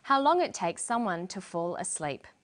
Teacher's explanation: And then for the very last item in the list, how long it takes someone to fall asleep. She uses falling intonation. This is how we know the list is finished.